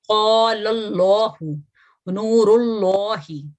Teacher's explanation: اگر فتح یا دمہ ہو، لام مشدد سے پچھلا جو متحرک لیٹر ہے وہ فتح یا دمہ ہے، تو اس لام کو ہم موٹا پڑھتے ہیں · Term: لام الجلالہ